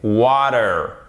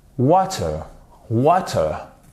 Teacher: ça sera plus avec la prononciation d'un T bien distinct